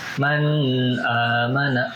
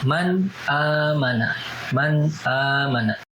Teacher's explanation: Ketika nun mati bertemu dengan hamzah, maka harus dibaca dengan jelas tanpa ada dengung. Jadi bacanya nggak gini, nggak man amana, enggak, tapi man amana, man amana. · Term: izhar